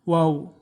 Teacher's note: ərəb dilində olan vavda dodaqlar önə doğru uzadılır və dişlər dodağa toxunmur